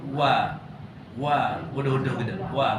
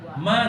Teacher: Kalau wa tu dua bibir dua bibir atas tidak rapat.